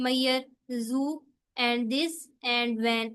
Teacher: इन सब में हमारे आपको पता चलेगा कि आपकी वाइब्रेशन हुई है गले में। ठीक है, वोकल फोर्स में बेसिकली वो हमारी वाइब्रेशन होती है। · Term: वॉइस साउंड